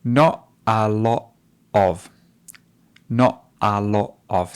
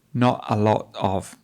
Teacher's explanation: Do you notice how she drops the T? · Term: glottal stops